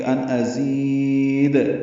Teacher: زی آئے مدہ ہے، اور یہاں پہ زا کو لمبا کریں گے · حمزہ اقصی حلق سے بالجہر ادا ہوگا · نون ساکن کے بعد حمزہ آنے کی وجہ سے اظہار ہے، نون ساکن کو ظاہر کر کے پڑھیں گے · وقفاً دال ساکن پہ قلقلہ ہے